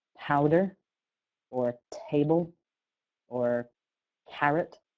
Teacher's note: the aspiration of p and t and c at the beginning of a stressed syllable